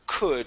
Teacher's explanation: Could instead of an oo, open your mouth more.